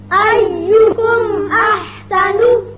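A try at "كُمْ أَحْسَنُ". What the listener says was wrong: میم کو آپ نے پورے مخرج کے ساتھ مل کر فوراً الکر دیا، اس پر ٹھہرے نہیں، کم نہیں کرنا۔ ایم احسن۔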